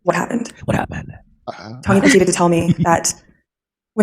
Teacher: she's very breathy with her speech